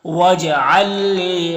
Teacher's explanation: لام ساکن ہے اور لام مشدد ہے تو یہاں پر یہ بھی ادغام ہوگا، اور اس ادغام کو ادغام مثلین کہتے ہیں، بغیر غنہ کا پڑھتے ہیں